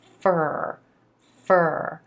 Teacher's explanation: the tongue is in position for the ER sound as you're articulating that F consonant · our F consonant with the teeth resting on the inside of the bottom lip moving directly into that a as in purple sound fur fur again the tongue is in position for the ER